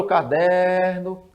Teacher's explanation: você vai prolongar a sílaba em der então é é uma a sílaba forte não é a última é é a penúltima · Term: paroxítona